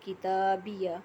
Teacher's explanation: تا کو کھڑی زبر کی وجہ سے ایک الف کے برابر کھینچ کے پڑھیں گے